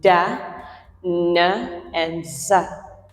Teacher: These are examples of alveolar sounds. The tongue touches that rough surface that is right behind our upper teeth, and we produce consonants like da, na, and za.